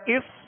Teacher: صاد میں سیٹی کی آواز پیدا ہوگی اور صاد کو پر پڑھیں گے اور صاد ساکن ہے، سکون ہلنے نہ پائے، اس، طا زبر